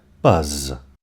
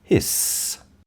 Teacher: Z is the voiced form of the sound s, which is unvoiced. Put your fingers on your throat when you say the word buzz.